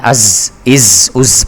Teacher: زا سین صاد، یہ والے جو 3 حروف ہیں اس میں سیٹی کی آواز آنی چاہیے